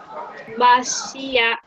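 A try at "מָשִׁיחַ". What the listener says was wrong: Yeah.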